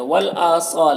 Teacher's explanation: हमज़ा में खड़ा ज़बर है, एक अलिफ बराबर खींचेंगे